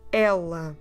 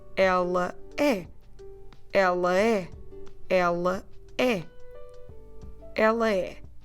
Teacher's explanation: And the word for she, ela, you clearly pronounce both syllables with open sounds.